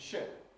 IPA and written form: ʃɪp (ship)